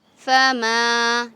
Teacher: ایک الف کی مقدار کھینچیں گے، الف سے پہلے زبر ہے